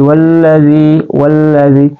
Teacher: hafatul lisan atau pertengahan lisan kita atau tepi lisan kita ya jadi lam itu dia keluar di tepi lidah